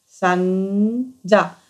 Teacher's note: जीभ आपली पुढे दाताजवळ टेकत नाही पुढे टिकते न आणि हा जो